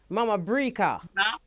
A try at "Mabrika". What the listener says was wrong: Not Mama, you know.